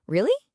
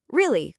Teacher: So in a language like English, which is an intonational language, I can use my pitch to show emotion. I can say, really? Going up. Or really? Going down. The meaning of the word doesn't change.